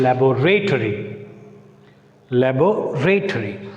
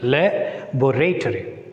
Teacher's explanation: though it is a noun, it takes stress on B, second syllable.